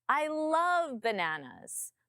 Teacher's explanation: My tone comes up on love.